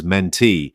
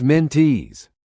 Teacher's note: The stress in the word mentee is on the last syllable.